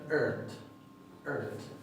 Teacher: La RT a menudo se va a pronunciar con lo que se llama una R retrofleja, que es la R del inglés.